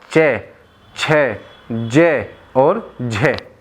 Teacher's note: चे बोलने पर तालु पर, कंठ पर प्रभाव नहीं पड़ता